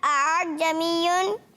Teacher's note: یعنی دونوں حمزہ کو واضح کیا